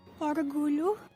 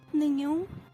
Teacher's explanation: These two represent palatal sounds, ly and ny, which some English speakers may need to practice on.